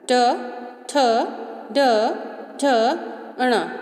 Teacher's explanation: इसको हम जब उच्चारण करेंगे तो वायु टकराएगी कहाँ से? मूर्धा से, तो इनको हम कहेंगे मूर्धन्य।